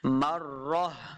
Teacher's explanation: جب وقف کریں گے تو اس تا کو ہم نے ہا کے ساتھ بدل دینا ہے، ہا کی آواز آئے گی